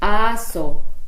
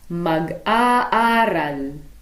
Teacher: there are also glottal stops before vowels at the beginning of a word and before vowels that follow a hyphen